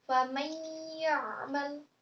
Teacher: famay itu harus ditekan, dua ketukan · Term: tasdid